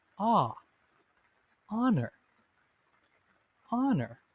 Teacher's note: You may notice that even though the first letter is an H, a consonant, the first sound is a vowel sound.